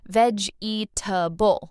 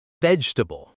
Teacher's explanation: Learners often say veg-eatable, all 4 parts. But native speakers say vegetable, shorter, smoother.